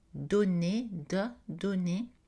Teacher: On produit en français t, d, n avec le bout de la langue, l'apex, contre les dents.